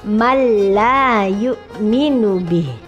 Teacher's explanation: Malla, nun mati bertemu dengan lam, harus dimasukkan. Ini idgham juga, tetapi idghamnya bila gunnah, tanpa mendengung. Jadi langsung malla yu'minu bih.